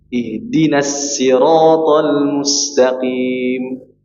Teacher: sadnya harus dibaca tebal